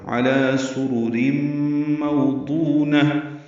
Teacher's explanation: سرر میں سین باریک سفید کی آواز سے ادا کریں گے، را پر پیش را پر پڑھیں گے، پھر را کے نیچے دو زیریں، را باریک پڑھیں گے، اور تنوین کے بعد میم آنے کی وجہ سے ادغام ہوگا، ادغام ناقص ہے، یہ غنہ ہوگا.